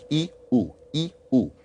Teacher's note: if you say oo, in a way, it's like you start with E and then pull back.